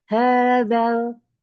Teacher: Jadi zalnya nggak dipanjangkan, bukan hadzal. Dan langsung ke lam sukunnya.